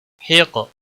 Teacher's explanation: قاف موٹا بھی پڑھیں گے، وقف کی صورت میں قاف ساکن ہوگا اور اس پر قلقلہ بھی ہوگا